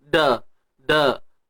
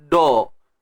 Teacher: Jadi kita kena tebalkan kalimah Allah. Yang tebal pada lam sahaja, bukan pada dal. Dal adalah asbab sahaja.